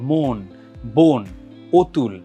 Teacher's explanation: সংবৃততে এটা হচ্ছে ও এর মত উচ্চারিত হয়